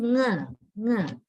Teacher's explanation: The back of the tongue. The back or dorsum of the tongue is brought into contact with the velum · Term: velar sound